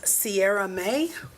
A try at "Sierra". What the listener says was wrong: Hello, it's pronounced Sarah. The I is silent.